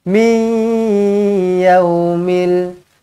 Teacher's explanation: Nun kosong bertemu dengan ya. Idgham ma'al gunnah.